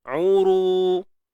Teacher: Jadi ru kena muncung bibir mulut sebab baris depan kan. Dan ru ni kena tebal.